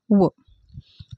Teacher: आहेत दंतोष वर्ण तर दात म्हणजे दंत दंत म्हणजे काय दात आपले दात आणि ओठ या दोन्ही स्थानापासून उच्चार होणारे वर्ण